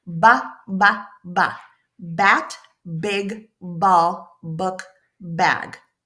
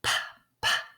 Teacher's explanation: It's like we're at the library and we have to be quiet. But but B, same mouth position as the letter P, but we're going to make some noise like we're at the party.